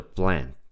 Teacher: you almost can't hear the T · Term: the glottal T